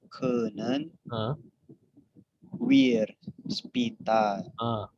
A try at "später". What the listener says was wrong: Später. Ini jadi A jadi E kalau A. Bukan spi, tapi E. Kan A umlaut.